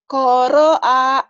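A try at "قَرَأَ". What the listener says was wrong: Nggak ada yang panjang. Nggak ada yang panjang. Nggak ada. Ayo.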